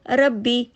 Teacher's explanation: اس کو ہم ڈھیلا ڈھالا پڑھیں گے تو یہ ایک ہی با پڑھا جائے گا، اور یہ بڑی غلطی ہے۔